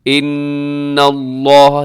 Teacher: ان اللہ، نون مشدد پہ غنہ ہے